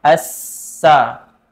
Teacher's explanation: sifat sofir, berdesis, seperti desisan ular